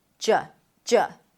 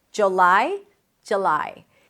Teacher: But a lot of people drop the first vowel to a schwa